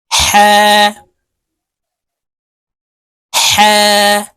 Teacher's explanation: হা হরফ হলকের মধ্যখান থেকে উচ্চারণ করতে হবে কারণ হার মাখরাজ হলকের মধ্যখান থেকে হবে